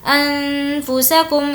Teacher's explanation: نون ساکن کے بعد فا ہے، غنہ کریں گے